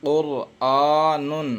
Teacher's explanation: را ساکن سے پہلے قاف کے اوپر پیش ہے، اس لیے را کو منہ بھر کر پڑھیں گے، پر ہوگی یعنی منہ بھر کر پڑھیں گے۔